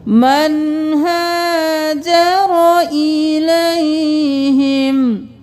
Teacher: हरूफ हल्की में से हा आ गया, तो हम यहाँ पे इख्फा नहीं इजहार करेंगे